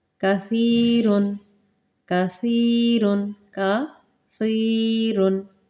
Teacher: دیکھیں جو ہماری زبان کی نوک ہے، جو زبان کا سرا ہے، میں نے پہلے بھی ذکر کیا، دو دانتوں کے اندر جو فرنٹ والے دو دانت ہیں ان کے اندر ان کی جڑ سے نرمی سے لگائیں گے